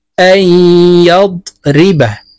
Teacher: তাই এই হামজা ইয়ার সাথে গুন্নার সহিত মিলাইয়া পড়ব, মাঝখানে জজমওয়ালা নুন বাদ পড়ে যাবে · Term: ইদগামে বা গুন্নার